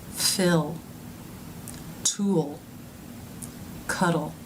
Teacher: In the vowel-like sound, the tongue fattens up towards the middle and raises slightly as the lips round a bit. In the second half of the dark L sound, the tongue moves forward.